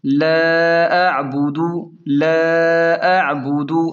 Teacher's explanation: عین کو حلق سے نکالیں نرمی کے ساتھ